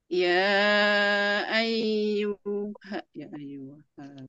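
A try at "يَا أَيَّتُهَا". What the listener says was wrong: Bukan ayyuha, ya ayyatuha. Ya ayyatuha.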